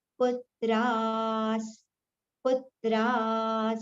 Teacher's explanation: Tra we have to prolong first and then the visarga sound, partial sa will be taken.